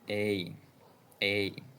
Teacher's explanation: If you start with the sound E and glide to the sound I, you get the diphthong A. A. You can find it in train, train, and wait, wait.